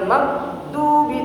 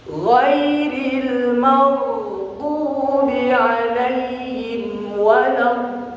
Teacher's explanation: Ghin itu bukan sifatnya syiddah tapi rukhwah. Mengalir ya.